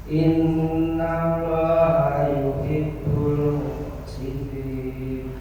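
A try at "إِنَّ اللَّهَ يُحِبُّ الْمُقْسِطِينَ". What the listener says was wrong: Pantulan kofnya kurang keras. Muqa sih. Lebih cekatan. Muqsitin. Innallaha yuhibbul muqsitin.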